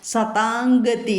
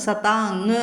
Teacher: സതാം അം എന്നുള്ളത് ഉച്ചരിക്കാതെ സതാംഗതി എന്ന് ഉച്ചരിക്കുക കേട്ടോ സതാങ്ങ് ഉച്ചരിക്കുക അനുസ്വാരം അനുസ്വാരത്തിന് പകരം അനുനാസികം ഉച്ചരിക്കുക കവർഗ്ഗത്തിൽ അനുനാസികം വരും